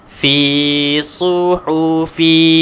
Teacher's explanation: fi panjangkan dua harakat. Fi, kemudian su tebalkan.